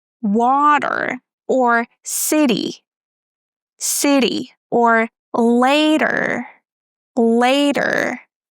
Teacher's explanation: In English, we call it flap T. When T is between two vowels, we pronounce it as flap T.